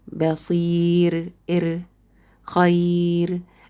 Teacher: Next case for the ra to be light, if it was non-vowel, sakina, preceded by ya. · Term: light ra